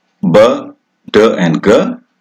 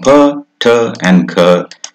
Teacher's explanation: ber, der, and ger, which are voiced plosives, they lose their voicing and become per, ter, and ker in Germanic languages.